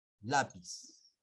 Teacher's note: La mayor fuerza de voz está en la penúltima sílaba. Ya dijimos que contamos de derecha a izquierda.